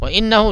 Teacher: تو ذالک علی ذالک جالی کا نہیں علی ذالک لشہید وَإِنَّهُ لِحُبِّ الْخَيْرِ لَشَدِيدٌ ٹھیک ہے. وَإِنَّهُ نون پہ غنہ ہوگا کیونکہ نون پہ تشدید ہے. ہا نکالے گا ہا اچھے سے.